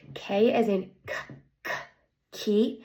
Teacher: Um that sound the place of articulation is the back of my throat. Man of articulation is that it stops air flow. and is an unvoiced sound.